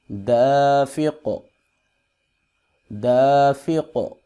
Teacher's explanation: یہ جو اق کی آواز ہے اس کو قلقلہ کہتے ہیں، ایکو ساؤنڈ پیدا کرنا